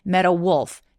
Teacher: 티가 모음 사이에 끼어 있기 때문에 굴러가는 water 할 때처럼 굴러가는 소리 마치 우리나라 말의 리처럼 소리가 비슷하게 나기는 합니다 그래서 met wolf